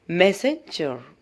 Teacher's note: മെസ് എന്നുള്ളത് നമ്മൾ ഉച്ചാരണം കൂടുതൽ സ്ട്രെസ് ചെയ്ത് കൊടുക്കുക. പിന്നെ വരുന്ന സെൻജർ, അത് താഴത്തോട്ട് അൺസ്ട്രെസ് ചെയ്തുകൊണ്ട് വായിക്കണം.